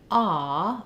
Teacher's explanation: my jaw is fairly open and my lips are rounded